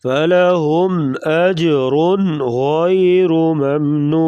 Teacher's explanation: نون ساکن یا نون تنوین کے بعد حروف حلقی غین آ گیا یہاں پر اس لیے اظہار کر کے پڑھا جائے گا